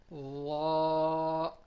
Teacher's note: when the tip of our tongue touches the edges of the front top teeth